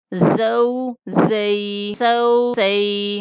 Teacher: سین کو سختی کے ساتھ پڑھیں گے، سین اور زا کا مخرج ایک ہوتا ہے، سیٹی جیسی آواز ان میں پیدا ہوتی ہے۔